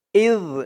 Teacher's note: ইয হামজা দিয়ে জাল ধরবে ইয জালের উচ্চারণটা একদম নরম হবে জিহ্বার মাথা উপরের দাঁতের মাথার সাথে লাগবে